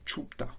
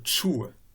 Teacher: devant ce e, le pe alterne avec un we. Au lieu d'avoir pe, on a we, chue.